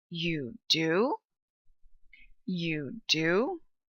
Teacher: That falling and then rising pitch is exactly what we're looking for.